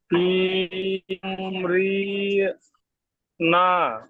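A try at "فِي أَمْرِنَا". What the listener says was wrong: রি, রি টান দেবেন না, আমরিনা।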